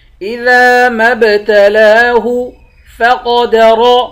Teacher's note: قاف کو اور را کو دونوں کو موٹا پڑھیں گے